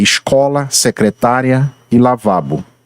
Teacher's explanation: a sílaba mais estressada eh se encontra na penúltima sílaba